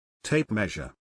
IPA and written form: ˈteɪp ˌmeʒ.ər (Tape Measure)